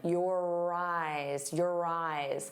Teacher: And notice how your and eyes link together. You're going to hear that R sound on both sides of the word if we link them.